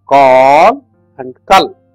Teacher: the elongation of the consonantal vowel brings in a difference in the meaning